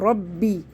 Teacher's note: رو کے اوپر زبر ہے, با کو 2 دفعہ پڑھیں گے. ربی, ہی, یہ ہی نہیں پڑھنا ہے, ہی ہے.